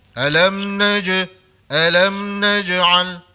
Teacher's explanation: Huruf jim mati dia bersifat qalqalah bukan bersifat hamas ataupun mahmus ya. Jadi jangan bunyi angin.